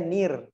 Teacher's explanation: Kita bacanya nir, kasroh dulu. Kita tahu ro sukun ketemu kasroh sebelumnya dibaca tipis apa tebal? Tipis.